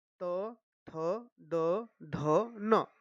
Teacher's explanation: जब हमने यह त वर्ग बोलते हैं तो हमारी जीभ जो है वह दांत को टच करती है। इसलिए इनका उच्चारण जो है वह दंत हो गया।